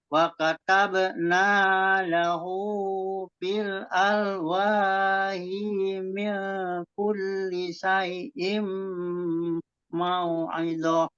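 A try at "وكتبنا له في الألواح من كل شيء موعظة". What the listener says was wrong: Hi-nya sama dengan Pak Saiful. Tadi hi-nya itu nggak panjang ya. Alwahi min kulli syai'im mau'idhah.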